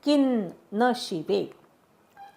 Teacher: की वरच्या अनुस्वाराचा अर्धा न म्हणायचा